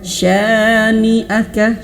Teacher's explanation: Supaya benar di sini tahan 2 harokat. Syani'aka, sanya panjang 2 harokat.